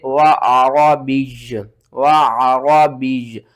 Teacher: اور وقف کی صورت میں دو پیش ختم ہو جائیں گی تو آپ نے کیا کرنا ہے، یا کو ساکن کر دینا ہے۔